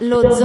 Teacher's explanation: Remember Z is a double sound, double consonant.